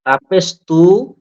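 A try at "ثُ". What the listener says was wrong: তা না এটা তিনটা নুক্তা আছে দেখেন সা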